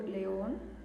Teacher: la colgatura, la fuerza de la voz está yendo en on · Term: palabra aguda